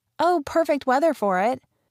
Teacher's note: Perfect, the most stressed word there.